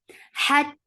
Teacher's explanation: Ha will get sifa of rakhawa because it is with sukoon now because of the waqf. Hat, ha from middle part of your throat with hams